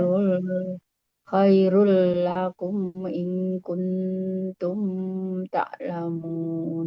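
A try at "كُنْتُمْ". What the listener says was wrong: Kalau tumnya nggak ditahan, Bu. Kuntum. Bukan kuntum. Kung, kung, Kuntum tak. Tumnya nggak ditahan lagi, Bu. Udah idhar sini. Kuntum tak. Kuntum tak.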